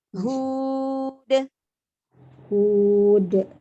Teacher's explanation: Huruf H-nya, H yang dari tenggorokan bagian bawah dijelaskan lagi.